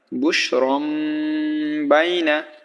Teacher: বুশ র মিম জরম দেখেন এখানে তানবিন আছে দুই জবর সো তানবিনের পরে বা আছে সেই কারণে এখানে ছোট্ট মিম আসছে তাহলে এখানে গুন্না হবে অর্থাৎ পরিবর্তন করে পড়তে হবে এখানে কিন্তু এক্সট্রা মিম চলে আসছে